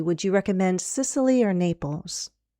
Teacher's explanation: If there's a choice, you're going to have a pattern, a combination of rising then falling